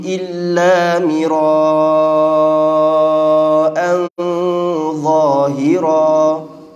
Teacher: Tanwin pada huruf hamzah dibaca dengan tebal sebab dia bertemu dengan huruf isti'la. Mira'an tebal sebab dia ikhfa' dia tu bertemu dengan huruf yang tebal iaitu za.